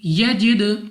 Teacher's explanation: دال ہمارے پاس قلقلہ میں سے ہے، تو جب ہم ادا کریں گے ہمارے مخرج بھی جنبش سی ہوگی، یعنی ہمیں اپنی آواز واپس سنائی دے گی۔